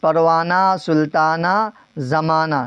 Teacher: ہائے مختفی جو تلفظ میں نہ آتا ہو